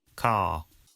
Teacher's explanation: Father ends in a simple schwa vowel, like father. And in car, the vowel sound is lengthened in place of the R sound. Car. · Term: non-rhotic